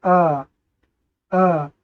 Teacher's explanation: आ का उच्चारण करते समय हमारा जो मुख है यह अधिक खुलता है सबसे अधिक खुलता है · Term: विवृत स्वर